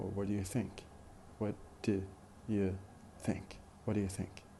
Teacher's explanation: But in connected speech, when we try to say such a question in a normal way, in a conversation, we tend to unstress the auxiliary do and unstress the pronoun you.